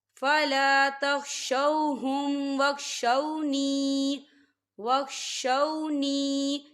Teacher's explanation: فلا تخشوہم واخشونی دیکھیں واخشو واو ساکن ہے، واو ساکن سے پہلے زبر ہے، تو یہاں پر واو لین ہو رہا ہے، تو ہم اسے بالکل نہیں کھینچیں گے، ہم اسے جلدی سے پڑھیں گے۔